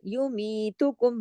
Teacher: मी को दो हरकत खींचा, क्योंकि ये जो है या मद्दा है